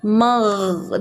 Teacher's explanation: لام زیر رل، میم کے اوپر زبر ہے، غین ساکن ہے، غین کو ہم میم سے ملائیں گے اور غین کی آواز کو ہولڈ کریں گے، اچانک سے جھٹکے سے نہیں پڑھیں گے